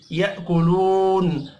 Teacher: الف مدہ ایک الف کے برابر کھینچ کر پڑھیں گے ، یأکلون، واو مدہ بھی ایک الف کے برابر کھینچ کر · وقف کی صورت میں نون ساکن پڑھنا ہے